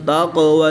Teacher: قاف ساکن ہے تو اس میں بھی قلقلہ صغریٰ کر کے پڑھیں گے